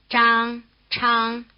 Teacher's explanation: The consonants in the first row, written ZH and CH, are described as retroflex consonants.